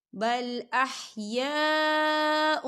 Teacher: یہ دیکھیے یا الف مدہ بھی ہو رہا ہے، خالی الف سے پہلے زبر ہے اور اس پر مد بھی ہے، تو ہم اسے 4 حرکت کی برابر کھینچ کے پڑھیں گے